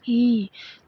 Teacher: तो आवृत्त आवृत्त माने कम खुला हुआ तो इ क्या है इ ऐसे बोलिए इ तो इसमें मुख नहीं खुलता तो आवृत हो जाएगा